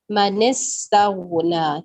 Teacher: من استغنا، من سین پہ دیکھیں، سین میں سیٹی کے آواز بالکل کلیئر اور شارپ ہے